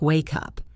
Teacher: Or look at wake up. The K moves over to the U.